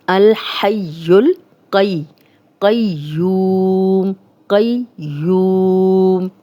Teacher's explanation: یا یہاں بھی 2 بار پڑھی جائے گی، اس پہ شد ہے، قوف کو موٹا پڑھیں گے